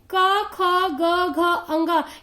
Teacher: ये ध्वनि हमारे कंठ से निकल रहा है, इसलिए इसे कंठ व्यंजन कहा जाता है